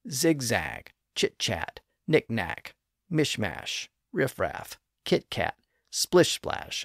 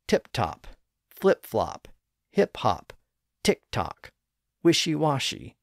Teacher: we always start with a high front vowel I and then we drop down to a lower vowel sound a or a we never start low and move high now